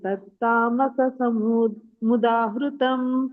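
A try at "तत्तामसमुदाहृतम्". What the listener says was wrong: ತತ್ತಾಮಸ ಮುದತಂ ಎರಡು ಸಾಯಿ ಇಲ್ಲ ಅಲ್ಲಿ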